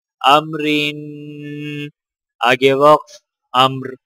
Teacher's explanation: را کے نیچے زیر ہونے کی وجہ سے را باریک پڑھی جائے گی